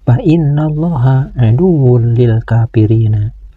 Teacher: Pada bacaan ini ada huruf nun yang bertasdid. Huruf nun yang bertasdid ini harus dibaca guna, yaitu dibaca dengung ke hidung. Panjang dengungannya sekitar 1 alif setengah atau tiga ketukan. · Kalimat Allah ini harus dibaca tabhim, yaitu dibaca tebal. Karena kalimat Allah ini didahului oleh huruf yang berbaris fathah, yaitu huruf nun.